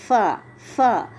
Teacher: فا کا مخرج بھی شفتان ہے، لیکن کیسے کہ ثنایا علیا یعنی سامنے کے جو 2 دانت ہیں، جب وہ نچلے ہونٹ کے اندرونی حصے یعنی جو انر پارٹ ہے، اندر والا حصہ ہے، سامنے کے 2 دانت نیچے والے ہونٹ کے اندرونی حصے پہ، انر پارٹ پہ لگتے ہیں تو فا ادا ہوتا ہے.